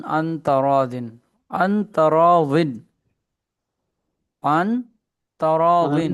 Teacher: आधी आवाज मुंह में और आधी नाक में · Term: इख्फा